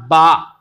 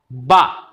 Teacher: बा की जो आवाज़ निकली है ना, उसमें दोनों होंठ आपस में जुड़ गए, मिल गए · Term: बा का मखरज